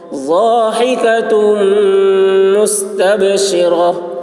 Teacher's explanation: ضاد کی آواز موٹی ہوگی، ہا حلق سے ادا کریں گے